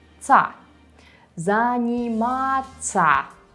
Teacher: Don't forget that we'll always read such endings as [-ца] - [занимАца].